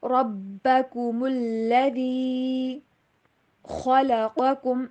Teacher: را کو موٹا کر کے پڑھیں گے اور لام کے اوپر تھوڑا سا زور دے کے اور با کے اوپر بھی زور دے کے پڑھیں گے کیونکہ تشدید ہے، ٹھیک ہے۔ ربکم الذی خلقکم، میں نے اکثر دیکھا ہے ربکم الذی، کم الذی کو اس طرح سے پڑھتا ہے جیسے لام کے اوپر جزم ہو، حالانکہ اس کے اوپر تشدید ہے، خیال رکھنا ہے اس چیز کا۔